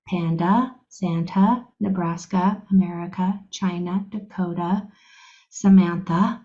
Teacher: when a is at the very end the last letter it will always change to the schwa sound